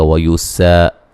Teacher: سین کو باریک سیٹی سے ادا کریں گے